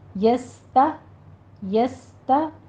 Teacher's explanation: یس تا یہ دونوں چیزیں، سین بھی، سین میں سیٹی کی آواز بھی آئے گی، ہمس بھی ہوگا، تا بھی باریک رہے گی، سین بھی باریک رہے گی